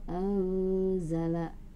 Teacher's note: hukumnya harus samar-samar, disertai dengan gumaman, yang merupakan Ikhfa